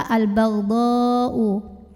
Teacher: didahului fathah kemudian hamzahnya yang U1 kata yaitu kata Al baghdau maka cara membunyikan botnya ini adalah dipanjangkan boleh 4 boleh 5 harokat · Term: mad wajib muttasil